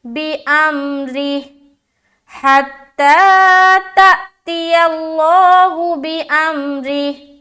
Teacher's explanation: را کو باریک رکھیں گے اور ہا سے ملائیں گے. اسٹاپ کریں گے تو ہا کے نیچے جو کھڑی زیر ہے وہ ہٹ جائے گا اور اس کے اوپر سکون لائیں گے.